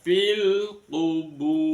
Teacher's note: ro-nya dibaca ro tafkhim, karena sebelum ro sukun ada waw sukun. Huruf di dhamma bertemu dengan waw sukun, makanya ro-nya dibaca ro, dibaca tafkhim.